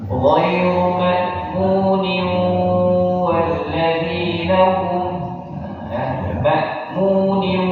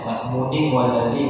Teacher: Nun tasdid nun yang bertanwin jumpa dengan huruf waw. Tanwin jumpa sama waw hukumnya idgham di gunnah. Maka dia di sana harus ada gunnah.